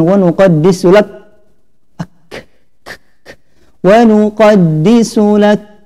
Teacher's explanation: kaf di sini harus keluar nafas, jadi jangan wa nuqaddisu lak, wa nuqaddisu lak ya, ada nafas di situ ya, karena kaf dia mempunyai sifat yaitu al-hams ya.